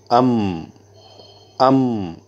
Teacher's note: اس کے ادا کرنے میں آواز دونوں ہونٹوں پر ٹھہر جائیں گی۔ اس سے معلوم ہوا کہ میم کا مخرج دونوں ہونٹ ہیں۔